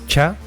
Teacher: si antes les ponemos una <t> se convierten en africadas, y se pronuncian /tsa/ como en tsunami, /tʃa/ más o menos como en coche y /tza/ como en pizza.